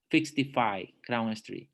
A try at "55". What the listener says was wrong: 55. Fifth. You're pronouncing it like six, like an X. Fifth. F-A. F-A.